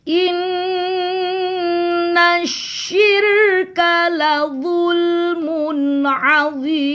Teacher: nunnya didengung dengung 2 ketukan